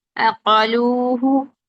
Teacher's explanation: قاف کی حرکت پوری ادا کریں اور قاف کو بلند کریں